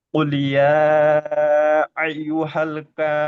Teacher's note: নুনের উপরে থেমেছি তাই নুনের উপরে জাবারকে বাদ দিয়ে সাকিন ধরে আগের অক্ষরের সাথে মিলিয়ে পড়ো।